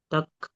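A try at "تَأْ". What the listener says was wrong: তাক নয়, কাফ তা হামজা জবর ঝটকা দিতে হবে তা।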